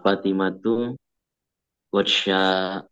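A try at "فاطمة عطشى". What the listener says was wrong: Ad. Bukan ghatsya. Ad. Adsya.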